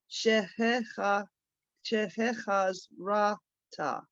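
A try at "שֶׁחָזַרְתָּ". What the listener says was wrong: Close. Sheheh chazarta. You're leaving out the resh. So the Zion, because the Zion has its own vowel, you see the Zion with a straight line, so that's za, but then it goes into the resh, zar ta.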